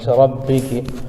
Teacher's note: را پر زبر ہے اس لیے را کو پر پڑھیں گے